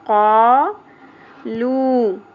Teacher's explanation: پیش کے بعد واو مدہ 1 الف کے برابر کھینچنا ہے · قاف زبر کے ساتھ الف حرف مدہ 1 الف کے برابر کھینچیں گے